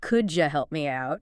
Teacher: Sometimes sounds blend together like the D and Y and could you making a J sound? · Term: blending